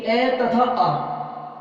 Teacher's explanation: इन दोनों का आभ्यंतर प्रयत्न विवृत होता है, उच्चारण स्थान कंठ होता है, तो ये दोनों आपस में सवर्ण है।